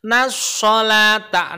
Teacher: Nas itu namanya idham syamsiyah al syamsiyah ya. Lam syamsiyah itu maksudnya yang alif lamnya alnya itu tidak kebaca langsung ke huruf kedepannya, yaitu huruf shad. Shad itu huruf syamsiyah ya.